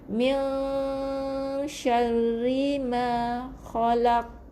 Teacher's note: kita matikan huruf qaf dengan qalqalah kubra, qalqalah yang nyaring bunyinya